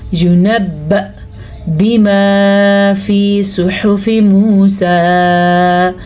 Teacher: حمزہ کے اوپر جب یہ جزم آ جائے تو وہاں پر ہلکا سا جھٹکا پیدا ہوتا ہے، لیکن آواز نرم ہی رکھنی ہے، عین کی طرف نہیں لے کے جانی ہے آپ نے، یعنی کہ ینبأ بما فی صحف موسیٰ.